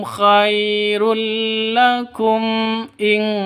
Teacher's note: mim mati bertemu dengan Hamzah jelas terang karena izhar syafawi